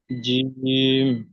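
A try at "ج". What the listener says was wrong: জিমটা ক আলিফ পরিমাণ টান। টান দেন, টান দেন, টান দিয়ে পড়েন।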